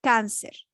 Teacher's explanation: La mayor fuerza de voz está sobre la penúltima sílaba.